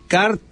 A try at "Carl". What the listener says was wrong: Carl. Just Carl. That's not car. No, it ends with an L.